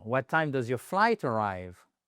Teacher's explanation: On redescend sur la fin.